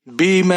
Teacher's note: میم کے اوپر زبر ہے اور مد منفصل ہے یہاں پر, تو آپ اسے تین الف کے برابر کھینچ کر پڑھیں گے